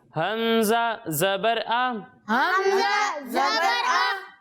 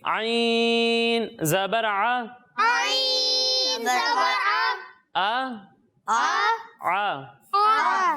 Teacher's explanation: ایک حرف ہے حمزہ اور دوسرا حرف ہے عین۔ جب ہم حمزہ کی ادائیگی کریں گے تو اسے حلق کے نچلے حصے سے پڑھیں گے، اور جب ہم عین کی ادائیگی کریں گے تو اسے حلق کے درمیانے حصے سے پڑھیں گے